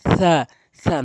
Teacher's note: জিহ্বার আগা সামনে দুইটি দাঁতের আগা থেকে উচ্চারণ হয়।